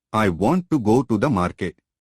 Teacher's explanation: Notice how the stressed syllables I go m are evenly spaced in time. The unstressed words want to to the are said more quickly.